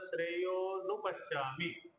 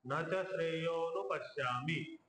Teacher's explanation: श्रेय अ आणि उ ची संधी होऊन ओकार बनतात